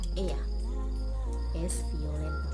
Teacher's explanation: Double L itu cenderung mereka bilangnya kayak Y di sini ya.